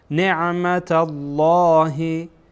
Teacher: اینجا لام جلاله پر خانده میشه چرا که این تای مربوطه که در اینجا هست فتحه داره